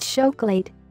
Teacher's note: the ch in Portuguese has the sound of sh. So, chocolate is pronounced chocolate.